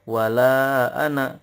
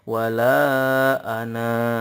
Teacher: Nah, kata ana nih di atas alifnya itu ada bulatan lonjong. Kalau di wasol itu jadinya pendek. Wala ana, karena alifnya tidak dianggap. Sedangkan kalau di waqaf jadinya panjang.